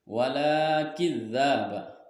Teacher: Wala kidzaba masuk ke dalam hukum mad tabi'i panjangnya 2 harokat